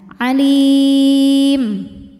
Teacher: Mad tabi'inya ya sukun didahului harokat kasrah, kemudian huruf yang disukunkannya adalah huruf mim ya. Maka lamnya dipanjangkan, boleh 2, boleh 4, boleh 6 harokat. Asal harus konsisten, harus sama dalam sekali bacaan. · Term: mad arid li sukun